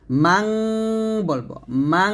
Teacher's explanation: নুনের মানে নর পরিবর্তে আমরা বাংলা অনুস্বরের মত উচ্চারণটা করব